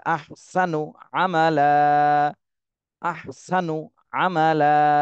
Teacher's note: এক জবর বাদ দিয়ে এক আলিফ টেনে পড়তে হবে আহসানু আমলা আহসানু নুতে টান দেয়া যাবে না দ্রুত বলতে হবে · নুতে টান দেওয়া যাবে না, দ্রুত বলতে হবে